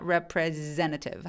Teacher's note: repre 할 때 성대가 울리니까 representative 하면서 S가 아니라 Z 발음이 납니다.